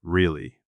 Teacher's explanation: With a falling intonation means you are skeptical